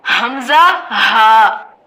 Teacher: انتہائی حلق یعنی آخر حلق سے ادا ہوتا ہے، عربی لغت میں اقصی حلق اور انگلش میں لاسٹ تھروٹ